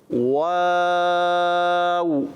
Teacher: واو غلط واو نہیں پڑھنا پڑھنا ہے واو کیا پڑھنا ہے دونوں ہونٹوں کو گول کرنا ہے آگے کی طرف نکالنا ہے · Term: واو کی ادائیگی